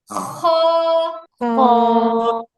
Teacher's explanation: এটা খ, খ। হ্যাঁ, খ বলার সময় আপনাদের হচ্ছে একটা গলার মধ্যে খসখস একটা আওয়াজ হবে, খ। আপু, খর খর খর খর এই শব্দটা, খর খর মানে খ।